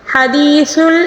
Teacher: زبان کی نوک کو دونوں دانتوں کے درمیان ہلکی سی دبنا چاہیے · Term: سا